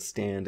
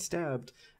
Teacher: Similarly, in the word stand and stabbed, again, a in stand is nasal, but a in stabbed is oral.